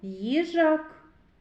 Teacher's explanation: Перший склад - це звукосполучення звуків й м'який приголосний. Та другий звук і голосний.